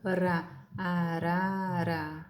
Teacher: É uma vibração bem leve, tá? Mas tem uma vibração. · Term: TEP